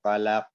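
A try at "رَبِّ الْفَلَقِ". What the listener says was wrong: Pemantulannya tidak boleh ada jeda. Rabbil falaq. Falaq langsung. Jangan falaq.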